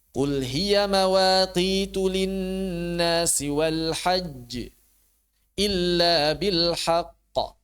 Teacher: huruf syidah ditekan lebih tepatnya ditahan ditahan lalu dilepas